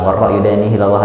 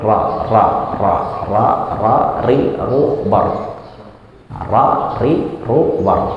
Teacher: Kena gusi agak ke belakang sedikit. Jadi jangan di ujung sama kena, tapi agak mundur sedikit. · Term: huruf ro